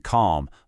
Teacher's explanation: a as in calm, low and back